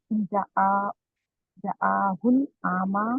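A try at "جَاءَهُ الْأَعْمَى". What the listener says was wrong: जा, जा को लंबा करेंगे, जा को लंबा करेंगे।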